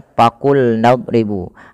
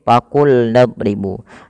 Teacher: Untuk lafal huruf fa teman-teman ini jangan kita ganti dengan huruf P